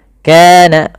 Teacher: kana mad tabi'i, panjangkan 2 harakat